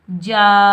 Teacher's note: یہ الف مدہ، اس کو ہم ایک الف کی مقدار میں کھینچ کر ادا کریں گے